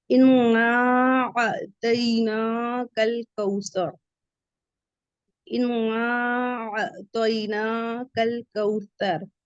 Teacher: تا کا مخرج جو اپنی ٹپ آف دا ٹنگ ہے وہ فرنٹ والے ٹیتھ کے کنارے سے لگانا ہے، تبھی سادہ ہوگا آپ کا۔